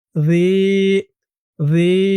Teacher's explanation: এক আলিফ টান জিরের পরে ইয়া সাকিন